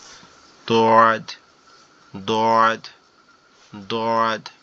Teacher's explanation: একটু জিহ্বাটা বেঁকে ডান সাইডের উপরের মাড়ির সঙ্গে লাগবে